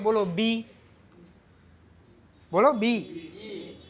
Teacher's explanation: થોડા 2 હોઠ મળે છે, એટલે કે અડધું રચના જે છે માઉથમાંથી થાય છે, પાછળ ઈ જે છે એ અંદરથી આવે છે.